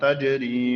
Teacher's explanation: بیا تجری کی قلقله کیږي ځکه جیم ساکن دی